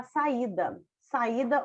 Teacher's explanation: nesse caso o i Ele é bem pronunciado então ele não é uma semivogal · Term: hiato